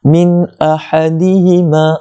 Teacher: nun mati bertemu dengan hamzah, yang mana hamzah itu di antara huruf izhar halqi, maka kita kena jelaskan dia, tidak perlu dengung. Min ahadihima, ha tu dia tu huruf dah.